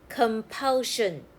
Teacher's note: Sion says shen. The letter O here makes the schwa sound k, kum, p, pul, compulsion.